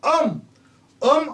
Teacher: आधी अ चा उच्चार होतोय नंतर अनुस्वाराचा उच्चार होतोय